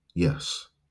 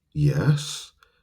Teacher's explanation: Now, if later on in that day, that same person comes back and says, I borrowed your car, now we might respond, "Yes," in a rising tone, which indicates some kind of uncertainty or doubt or concern as horrible things come to mind.